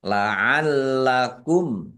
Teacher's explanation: Mim sukun bertemu dengan huruf ta, bacaan idhar safawi dibaca jelas.